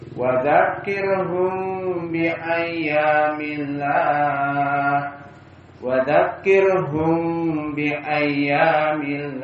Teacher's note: Karena mim itu makhrajnya disyafah di mulut, maka ikhfa asy-syafawi. · Dzakirhum bi ayyami, ikhfa asy-syafawi bi gunnah. Dinamakan ikhfa karena mimnya tersembunyi